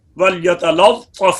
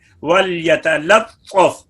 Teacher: چاچا بہت سے ناوقف عجمی لام کے اظہار کو ادا کرتے وقت قلقلہ کی طرف ان کی جو ہے محسوس ہوتا ہے کہ وہ قلقلہ کر رہے ہیں، تو فرمایا کہ وَلْيَتَلَطَّفْ کی لام کو بھی باریک پڑھو